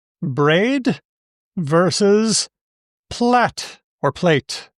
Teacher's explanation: they both end with an alveolar, d and t